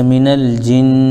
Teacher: تو تشدید ہونے کی وجہ سے نون پر غنہ بھی ہوگا · جیم کے نیچے زیر ہے لیکن نون کے اوپر تشدید ہے تو جیم کو نون میں ملا دیں گے